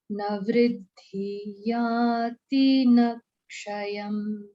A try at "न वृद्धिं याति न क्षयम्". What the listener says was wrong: Vruddhin yati. Anuswara is there. Na vruddhin yati.